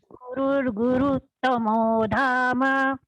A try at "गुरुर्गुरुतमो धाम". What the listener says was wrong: भगिनी it is not guruttamo it is gurutamo